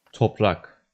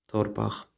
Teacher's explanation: In Azerbaijani, there's a tendency for side-by-side consonants to undergo metathesis. In other words, their order becomes reversed.